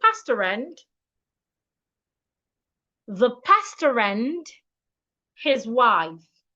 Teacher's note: So for me to read this sentence correctly, I need to link the R in pasta and the a in and. It means that pastor and the word and should be pronounced as one word. So instead of saying pastor and I should say pastor and the pastor and his wife.